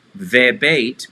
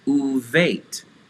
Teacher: We have a vav in front that means and because normally the dagesh would be in the letter beit for bite, the dagesh is stolen away by the vav to change the sound from a V to a U sound